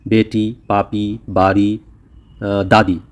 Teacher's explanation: एक तो इसकी आवाज़ ई जैसी निकल रही है, दीर्घ ई, लॉन्ग वोवेल है, बड़ी ई की आवाज़ निकल रही है।